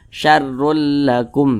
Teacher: lam hukumnya adalah idgham bila ghunah maka caranya dengan cara memasukkan jadi bunyi tanwin ini dimasukkan ke huruf lam